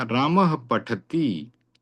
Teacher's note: विसर्ग की ह जो ध्वनि प के साथ जब जुड़ी तो उसे उपदमानीय प कहा गया।